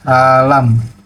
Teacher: konsonan nasel bilabial itu dibentuk dengan memerhatikan bibir bawah sebagai artikulator aktif dan bibir atas sebagai artikulator pasif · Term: konsonan nasal bilabial